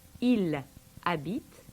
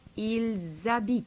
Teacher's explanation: the S of the il, I-L-S, gets carried over and pronounced